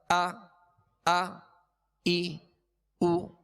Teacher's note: حمزہ میں ویسے بھی اس میں سختی ہے، جھٹکا ہے، اور اس کو ضغطہ کے ساتھ یعنی جھٹکے کے ساتھ ادا کیا جاتا ہے